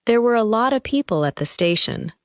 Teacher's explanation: The words lot of become one sound group.